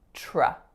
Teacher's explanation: Because I've moved the T back onto my palate, it sounds more like a CH sound, like in chips. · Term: assimilation